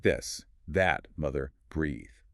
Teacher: Now, you have to turn on your voice box. You have to make your vocal cords vibrate. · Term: voiced